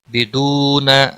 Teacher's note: بدون واو مدہ ہے، ایک الف کے برابر کھینچ کر پڑھیں گے